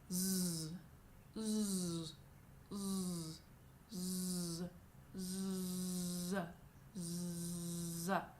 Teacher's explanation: You need to make sure that you're phonating on this consonant.